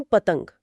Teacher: हम इसमें तीन व्यंजन है प त, ग हम तो प आता है ओ यानी ओष्ठ से। त आता है डी यानी दंत से। और ग आता है क वर्ग में मतलब के कंठ से।